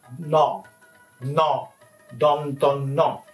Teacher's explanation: your tip of the tongue touches the back part of your uh teeth and then the sound is produced